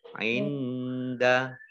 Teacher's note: nun sukun bertemu dengan huruf dal, bacaan ikhfa dibaca samar-samar